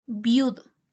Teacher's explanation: la i y la u se escuchan juntas no hay una entonación por separado